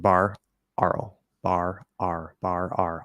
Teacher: it's just an R colored ah